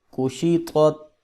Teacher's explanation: طا کو موٹا پڑھیں گے اور تا کو نرمی سے پڑھیں گے · ایک طا کو موٹا پڑھنا ہے اور دو نقطوں والی یہ تا کو باریک پڑھنا ہے، اس میں فرق کریں۔